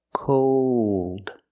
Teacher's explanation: with cold we hear the long o plus the dark L